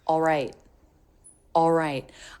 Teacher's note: the L is said very quickly it's a dark l so do not bring your tongue tip up